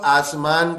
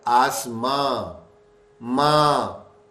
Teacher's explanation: یہ تو نون کو ہٹا دیا، ناک میں آواز لے گئے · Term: غنہ